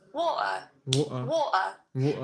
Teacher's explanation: But what you may hear is a lot of people saying water, Water. water, Water. and they glottalize it.